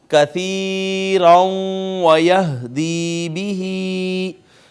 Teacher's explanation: یہ واو کے اوپر شد آئی تھی، ہم نے ما قبل دیکھا تو نون تنوین تھی، لہٰذا کیا ہوا ہے یہاں پہ نون تنوین کا واو میں ادغام ہو گیا ہے